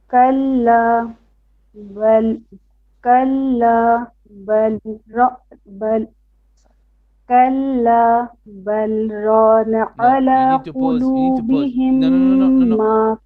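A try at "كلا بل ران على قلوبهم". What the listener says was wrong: You need to pause. You need to say bal, pause. Bal, don't change breath, but you pause. Kalla, you can pause and change breath, no problem. Bal rana, bal rana.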